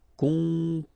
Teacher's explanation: Composer. Okay, O and M together, after that a consonant, so it's the nasal on.